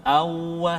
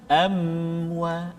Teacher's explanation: makhraj dua bibir dalam keadaan tertutup, macam ni, dua huruf mim dan juga ba.